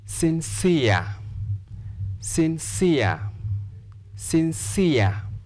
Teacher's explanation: we'll stress the second syllable because of ear